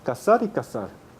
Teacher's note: en América Latina no hay diferencia articulatoria entre ambas palabras cazar y casar